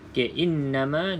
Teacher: nunnya ada sabdu maka wajibul gunah baca dengung dua harakat